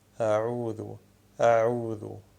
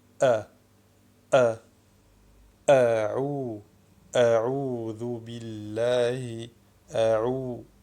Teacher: al-hamza as-sahiha qui sort du fond de la gorge en commençant par les cordes vocales fermées.